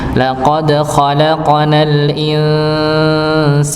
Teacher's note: Berikutnya pada al-insan, di sini ada hukum, ada hukum tajwid. Nun sukun bertemu dengan sin, maka dibaca Ikhfa nggih, samar nggih, disamarkan.